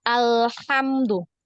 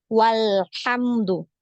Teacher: tanda wasal ini dibaca ada ya dibaca Dibaca ya hamzahnya ya dibaca berharakat ketika dia berada di awal kalimat ya namun dibaca tidak ada ketika berada di tengah-tengah kalimah